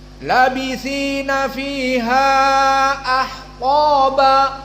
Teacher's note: Q di sini dalam keadaan mufakamah Maka jangan datar bacanya